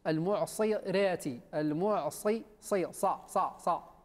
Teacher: خاصة أقصى اللسان يطلع يصعد إلى الفوق